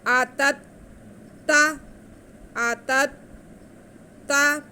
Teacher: क़ालू आ, क़ालू आ, अब ता पे ज़बर है और दूसरे ता पे शद है। पहले ता को हम दूसरे ता के साथ मिला लेंगे। आतत ता, आतत ता, थोड़ा सा रुक के मिलाएंगे क्योंकि शद अदा करनी है हमने।